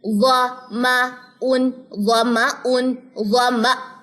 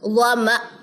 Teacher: حمزہ جزم جھٹکا لیتا ہے